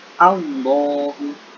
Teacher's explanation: Kalimat selanjutnya adalah kalimat Allah. Allahu itu mengandung bacaan tafhim karena lafaz Allah didahului oleh huruf hijaiyah nun berharokat fathah. Cara membacanya tebal.